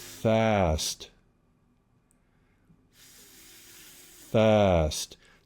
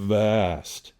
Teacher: Now for the V, we want that voicing from the very beginning. We don't want any airflow without the voicing.